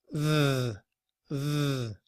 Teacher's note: the th sound that we make when we're also using our voice